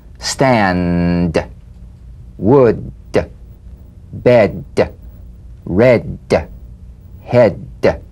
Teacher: play this d drumbeat on the springing away of the tongue from the upper gum Ridge